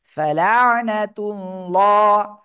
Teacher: আল্লাহ শব্দের লাম এর ডাইনে পেশ মোটা আওয়াজে পড়তে হবে।